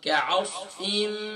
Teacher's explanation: काफ light है, आइन light है, स्वाद फुल में होते हैं